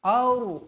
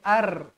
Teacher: Ra dibaca dengan tebal sebab hamzah ni berbaris atas.